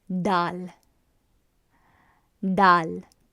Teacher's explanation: it's a harsher D so it's gonna be done done so the beginning position of the tongue is you taking the tip of the tongue and placing it at the center of the roof of the mouth